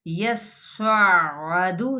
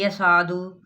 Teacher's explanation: स्वाद पे भी आपने जोर देना है लेकिन मोटा अदा करना है